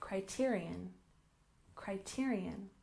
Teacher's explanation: criterion, where we stress the second syllable